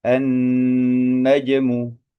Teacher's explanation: huruf jim sukun hukumnya adalah qalqalah, memantul gitu ya. An-najmu seperti itu.